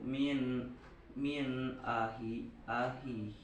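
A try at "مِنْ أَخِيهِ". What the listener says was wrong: Ahihi, hitnya yang panjang.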